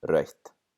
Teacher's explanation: eth and T can't go next to each other, so the eth changes into another T, so we have rautt.